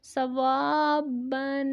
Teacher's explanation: واو حروف مدہ ہے، ایک الف کی مقدار تک لمبا کریں گے اور با پہ غنہ کریں گے